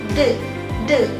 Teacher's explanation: Bunyi D adalah bunyi apical veolar hambat bersuara. Karena saat kita membunyikan D, kita akan menghambat. Kemudian kita bersuara D.